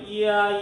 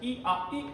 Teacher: 단모음이면 우리가 따로따로 발음해야지 이아 해야 되는데 이게 뭔가 빠르게 발음하니까 이아라고 하지 않고 야로 합쳐진다는 거지. 근데 그렇게 된 소리가 뭔 거 보니까 이게 바로 우리가 처음에 했던 반모음이라고. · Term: 이중모음